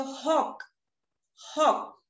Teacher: जेव्हा आपण क म्हणतो तेव्हा आपली जीभ मागे टेकते